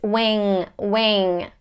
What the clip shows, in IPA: ˈwɪŋˌmæn